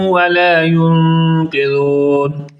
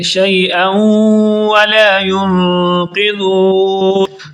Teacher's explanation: شیئا پر بھی غنہ کریں گے کیونکہ یہاں پر تنوین کے بعد واو آ گیا ہے اور ادغام ہو رہا ہے